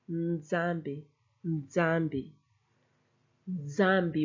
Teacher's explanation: You go N, but then you hit the Z stronger. Nzambi. Nzambi.